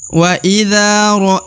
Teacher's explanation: du harakat perhati kan karena di depan huruf dza terdapat Alif maka huruf dza harus dipanjangkan dua harakat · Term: panjang dua harakat